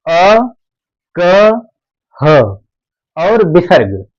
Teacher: तो अ क ह और विसर्ग ये ध्वनियां कंठ की ध्वनियां कहलाती हैं।